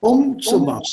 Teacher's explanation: Die Betonung liegt auf dem ersten Teil. The first half.